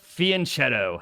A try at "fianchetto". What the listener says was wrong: Okay, but it's fianchetto. But the ch is just pronounced k.